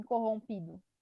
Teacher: Então a gente tem a sílaba mais forte, o pi, né? Se o pi, que é a penúltima sílaba, é a mais forte, então a gente tem uma paroxítona